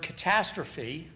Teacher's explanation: the first syllable, the ka, is unstressed, second syllable, ta, is stressed. And if you measure the vowel in each of those syllables, which is what we did here, in normal speakers, there should be a big difference in the duration between those 2 vowels. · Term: stressed syllable